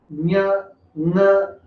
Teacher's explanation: ಈ ಅಕ್ಷರಗಳು ನಾವು ಮೂಗ್ ಸಹಿತವಾಗಿ ಹೇಳ್ತೀವಿ, ಮೂಗು ಮುಚ್ಚಿಕೊಂಡು ಹೇಳಿಕ್ ಸಾಧ್ಯ ಇಲ್ಲ. ಹಾಗಾಗಿ ಇವುಗಳನ್ನ ಅನುನಾಸಿಕ ಅಕ್ಷರಗಳು ಅಂತ ಕರೀತಾರೆ.